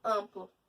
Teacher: Esse M ou N servem apenas para nasalizar a vogal, por exemplo, em amplo. Esse M aí está servindo apenas para nasalizar a vogal A. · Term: dígrafo vocálico